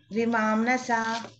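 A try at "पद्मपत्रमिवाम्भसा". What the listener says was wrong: నా కనిపిస్తుందా మీకు? నా లేదు కదా పదంలో. నా దేంట్లో కూడా ఆ పదంలోనే నా అనే అక్షరం లేదు. అంబస. అంబస అనండి ఒకసారి లాస్ట్కి. దీర్ఘం. అంబస.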